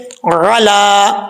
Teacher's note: میم تا پیش مت، تا زبر تا، متا کی اینا، متا کی اینا. علا عین، اس کو آپ نے کلیئر کر کے پڑھنا ہے، حمزہ کی آواز نہیں آنی چاہیے